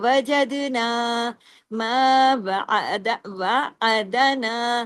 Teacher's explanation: یہاں ہم نے تمام باریک حروف پڑھے لیکن دال پہ کلکلا کیا. وجدنا ما وعدنا واو زبر و عین زبر دال زبر دا وعدا نون الف زبر نا وعدنا.